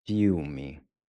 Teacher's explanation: So the IL is pronounced ew. It's like in English when we see something disgusting.